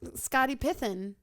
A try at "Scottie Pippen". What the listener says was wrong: It sounds like you're saying it right, but you got a lisp.